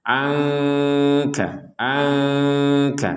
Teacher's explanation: nun sukunnya ketemu sama kaf dibaca dengan samar